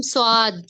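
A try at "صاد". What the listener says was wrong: वाव का साउंड नहीं लाना, वाव नहीं है ना यहाँ, अलिफ है। साद।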